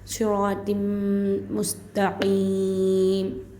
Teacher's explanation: क़ाफ का आवाज़ आना चाहिए, ता आना चाहिए, बौ नहीं है, पुर नहीं पढ़ना है।